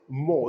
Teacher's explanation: It's spoken in a way in British English, which is different from the way it's spoken in American English. In British English, actually, R is not spoken.